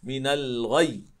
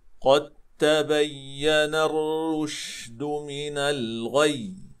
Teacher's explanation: حقيقة النبر موجود على الياء المشددة وعلى الواو المشددة دائما، في الوصل وفي الوقف دائما عندنا النبر، والغاية منها هو بيان الحرف المشدد